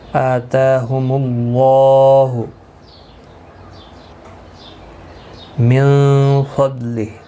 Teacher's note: آتاہم اللہ من فضلہ نون ساکن کے بعد حروف اکفا کا فا یا اخفا حقیقی ہوگا، غنہ کے ساتھ پڑھیں گے. ضاد حروف مستعلیہ ہے، پر پڑھا جائے گا، اور ہا ساکن وقف کی صورت میں پڑھا جائے گا، اور ملانے کی صورت میں ایک الف کی مقدار کے برابر کھینچ کر پڑھیں گے کیونکہ اس کے نیچے کھڑی زیر ہے.